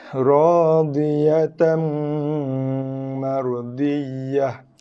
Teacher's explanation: Bagi 2 jumpa mim masuk dalam mim, tekan bibir, dengung, lepaskan dengan baris dia. Ta, daripada tan, jadikan dia dengan baris 1, ta, dibaca dengan satu harakat.